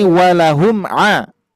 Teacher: Lihat makhraj mim asyafatain. Jadi makhraj mim itu ada di asyafatain atau syafawi dua bibir. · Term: izhar syafawi